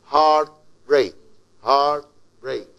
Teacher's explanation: it is like two words or two stressed syllables together. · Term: spondee